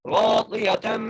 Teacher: را کو موٹا کر کے پڑھیں گے اور ایک الف کھینچ کے پڑھیں گے